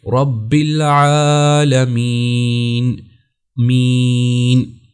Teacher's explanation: تو دیکھیں یا کو ہم لمبا کر رہے ہیں اس وجہ سے کہ یہ یا مدہ ہے